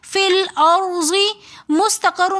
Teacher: فی الأرض مستقر میں سین حروف صفیریہ میں سے تو سین کو ہم نے پراپر طور پہ سیٹی کے ساتھ پڑھنا ہے. سین کو ہم نے اس طرح پڑھنا ہے کہ ہمیں پراپر طور پہ اس کی سیٹی خود سنائی دے. مستقر کے اندر قاف کو بھی ہم نے موٹا کر کے پڑھنا ہے تاکہ قاف اور کاف کے درمیان فرق واضح ہو جائے سننے والے کو بھی اور پڑھنے والے کو بھی.